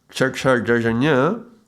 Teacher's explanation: cha chha ja jha ña, these sounds are palatals